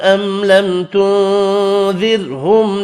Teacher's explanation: میم ساکن ہے، تینوں پر اظہار ہوگا، غنہ نہیں ہوگا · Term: میم کا اظہار